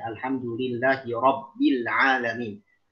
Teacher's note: untuk lafaz rabbi ya, maka mesti ditafkhimkan rohnya.